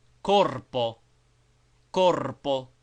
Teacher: and always with a trill as in singing